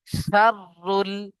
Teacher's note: রয়ের উপরে যেহেতু তাসদীদ, দুবার পড়বো। শিন র জাবার শার, র লাম পেশরুল, শাররুল।